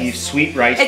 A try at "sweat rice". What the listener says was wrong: It's not sweet, it's sweat rice.